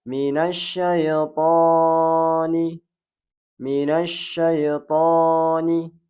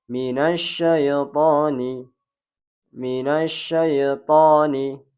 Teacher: huruf to berharokat fathah kemudian diikuti dengan alif, maka dia dibaca 2 harokat. Tidak boleh lebih dan tidak boleh kurang.